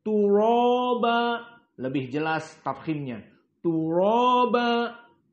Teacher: Turaba tafkhim ra karena fathah